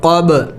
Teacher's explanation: با بھی حروفی قلقلہ میں سے ہے تو اس پر قلقلہ کرنا ہے، یعنی اس کو ہلا کے پڑھنا ہے